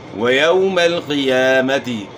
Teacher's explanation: واو لین ہے، نرمی سے ادا کرنا ہے، بغیر جھٹکے کا ادا کرنا ہے اور معروف ادا کرنا ہے، مجہول سے بچنا ہے.